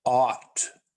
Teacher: is pronounced ought with a wide O sound in the middle of the mouth.